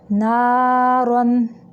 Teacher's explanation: سیس لا نارن، دیکھیں نا، نون کے بعد الف ہے، اور الف کے پچھلے حرف یعنی نون کے اوپر زبر ہے، تو یہاں پہ الف مدہ ہے، الف مدہ منہ سے نکلتا ہے، اس لیے نا کی آواز کو منہ سے نکالیں گے۔